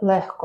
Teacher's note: Немає звука ґ в слові легко. Тут звук х за рахунок асиміляції.